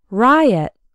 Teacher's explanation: Riot has two syllables and the stress is on the first one